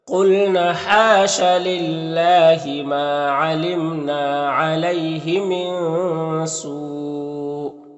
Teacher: سو جو مد ہے مد متصل ہے تو اسے 3 سے 4 الف کے برابر کھینچ کر پڑھیں گے